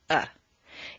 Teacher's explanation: it's a neutral vowel sound uh it's usually in an unstressed syllable though it can be stressed as well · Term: schwa